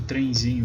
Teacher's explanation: você não pronuncia trem com N ali, você pronuncia com um I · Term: ditongo nasal